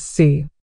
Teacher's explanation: Si for 4 is said in the 4th tone, which is a sharp, falling tone, while si for death is said in the 3rd tone, which is a dipping then rising tone